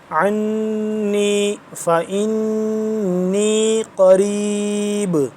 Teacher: فإنی نون مشدد ہے، اس پہ بھی غنہ کریں گے